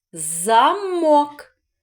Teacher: з замок вірно два склади на який склад падає наголос замок на другий склад на звук О